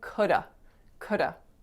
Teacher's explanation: feel like it so coulda is could have could have so in this case i'm not even putting the v on to have